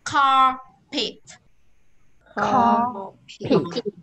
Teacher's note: Đây, cờ, pờ, tờ, ba âm này ra hơi.